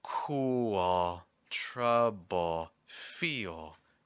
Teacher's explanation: Notice that the tip of my tongue will stay down on these words when it gets to the L. Instead, the back of my tongue will rise a bit. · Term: dark L